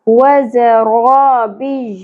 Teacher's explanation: و ز دونوں پہ ایک ایک حرکت ہے، زیادہ نہیں کھینچنا. ز کو سیٹی کے ساتھ شدت کے ساتھ پڑھنا ہے، بزنگ ساؤنڈ کے ساتھ.